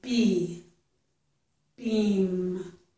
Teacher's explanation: the sound is made with our lips closed. And then because the lips are closed, the air can't come out that way, so the air comes out through our nose.